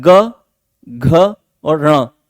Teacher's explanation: ग को बोलते समय गले पर जोर पड़ता है, अर्थात स्वर तंत्रियां झंकृत होती हैं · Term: सघोष